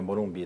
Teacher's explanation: em que a última sílaba é tônica, é forte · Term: oxítonas